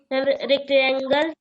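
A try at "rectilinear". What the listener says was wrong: रेक्टेंगल नहीं है, रेक्ट लिनियर। रेक्ट लिनियर, बोलिए रेक्ट लिनियर।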